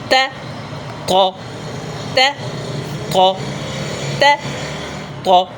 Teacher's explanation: اب یہ دیکھ رہے ہیں آپ، آت، یہ زبان لگی ہوئی ہے، یہ دانت ہے اور زبان کی نوک اوپر جڑ سے لگی ہوئی ہے اور پیچھے سے اٹھی ہوئی ہے، آت، یہ دیکھ رہے ہیں آپ، یہ دیکھ لیں توجہ سے، یہ طا کا مخرج ہے، ت طا ت طا ت طا۔